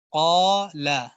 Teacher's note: الف سے پہلے قاف ہے اور موٹا ہے، یعنی اس الف کو بھی اب ہم موٹا کر کے پڑھیں گے